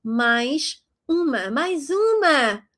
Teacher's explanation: Mais means more or another one in this case. And you're going to read that final S as a sh sound. Mais uma. · you're going to read that final S as a sh sound. Mais uma. If you say it fast, it sounds like a Z, as you probably realized.